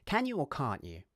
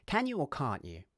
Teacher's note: 'Can' uses the short vowel /æ/ while 'can't' uses the long vowel /ɑː/.